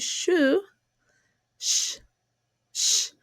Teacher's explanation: The lips are a bit rounded and the sound is also a voiceless sound.